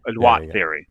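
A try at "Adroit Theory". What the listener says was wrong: even though it's French you didn't pronounce the T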